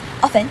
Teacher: The intensity graph also shows the strongest loudness on the first syllable and a gradual decrease towards the end of the word · When the word often is pronounced correctly as often with a silent t the part pitch contour shows a smooth pattern with a highest pitch on the first syllable of the pitch then slightly falls on the second syllable drawing natural stress placement.